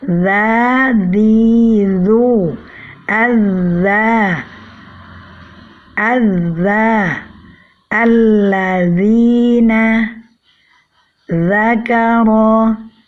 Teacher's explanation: hanya ujung lidah yang bertemu dengan ujung gigi seri atas tanpa disertai dengan naiknya pangkal lidah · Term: huruf zal